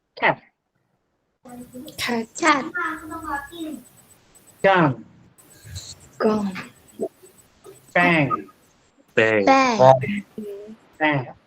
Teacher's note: We put our back of our tongue to the velum. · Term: velars